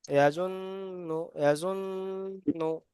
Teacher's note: নুনের পরে তাজদিদ এসছে, তাই এখানে গুণনা করা ওয়াজিব।